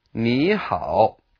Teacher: Ni changes into second tone.